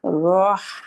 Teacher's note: رو again heavy اور ہا again light, روح، تو آپ نے منہ کو جب رو کی پوزیشن پہ رکھنا ہے، ہا ادا کرنے سے پہلے پہلے آپ نے منہ کی ہیوی پوزیشن کو لائٹ پوزیشن پہ لے آنا ہے، اور لائٹ پوزیشن کیا ہے؟